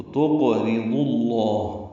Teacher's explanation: ضاد کو لفظ اللہ کے لام سے ملائیں گے، بیچ میں واو الف الف لام نہیں پڑھیں گے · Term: ادغام شمسی